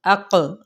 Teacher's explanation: क़ाफ हरूफ मुतालिया में से है, और साथ यहाँ पे कलकला का होगा रूल